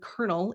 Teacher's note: we all hear an R sound when we say the word colonel, even though there's an L in the middle of the word